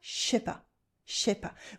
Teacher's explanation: We drop the ne here and we contract the sounds and it becomes je sais pas.